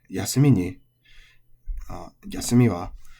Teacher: And then we got on to yasumi, which is odaka. So final high